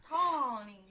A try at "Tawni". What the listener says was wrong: yeah, yeah, but not as drawn out. It's more like short.